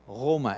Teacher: that's a r that's way back in your throat a uvular sound